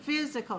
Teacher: Stress on the first syllable.